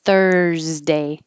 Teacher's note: the S looks like an S, but it sounds like a Z. Thursday. And then it's a Z because it's after an R.